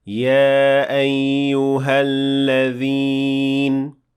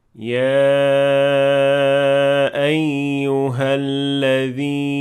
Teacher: So the first rule that we can see here is separated med in the word Ya ayyuha. So we are allowed to extend it for 2 harakat as a med tabi'i or natural med and say Ya ayyuha alladhin.